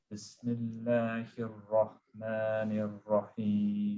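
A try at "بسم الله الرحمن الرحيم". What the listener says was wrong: The ha. Don't forget the ha. Don't forget the ha. The other difficult thing in Bismillah is the two has. Rahmanir Rahim. Remember, it's the same squeeze as the ain. Yes, heavy, sharp sound. And it squeezes out from the middle of the throat.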